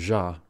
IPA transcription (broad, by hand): ʒ